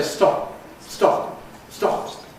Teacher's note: When we have one of the words that ends in a plosive at the end of an utterance, then we often just don’t bother to release it at all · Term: no audible release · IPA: [stɒp̚]